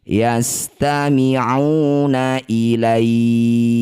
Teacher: Ya sukun ini panjangkan enam harakat baca lembut berikan huruf vokal i huruf terakhir kaf sukunkan. Yastami'una ilaika saat berhenti. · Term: mad lin